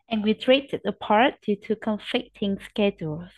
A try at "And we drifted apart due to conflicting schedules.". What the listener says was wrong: You need to stretch the words out, not do. Stretch the words out. And we drifted apart due to conflicting schedules.